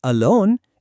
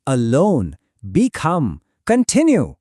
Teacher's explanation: they usually have the stress on the second syllable. అంటే మనం ప్రీఫిక్స్ని stress చెయ్యం, దాని తర్వాత వచ్చే సిలబుల్ని స్ట్రెస్ చేస్తాం.